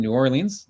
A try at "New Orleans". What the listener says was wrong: Now you got to get New Orleans right. There's not two words. New Orleans. N-Y-O-L-E-A-N-S, something like that.